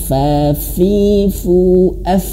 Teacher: Awas huruf fa dia memiliki sifat hames. Dan di sini huruf fnya ada tasydid.